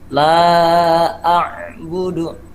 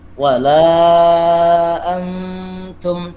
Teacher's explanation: Ya, la-nya 5 ketukan atau 5 harokat ya.